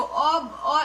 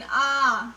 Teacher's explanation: ठीक है, जैसे आ, देखो अ एक मात्रा का है, मतलब अ जल्दी बोलिए, लेकिन आ थोड़ा लेट हुआ बोलने में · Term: दीर्घ स्वर